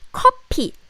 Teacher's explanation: Coffee in Korean is 커피. Because in Korean, we don't have this F sound, F. So F sound is replaced with P sound. So we say 커피.